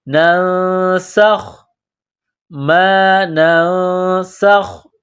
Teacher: سین میں سیٹی کی آواز پیدا کریں گے، سین کو باریک کریں گے